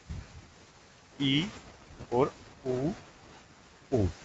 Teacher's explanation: मुंह सबसे कम खुल रहा है, तो इनको कहते हैं संवृत स्वर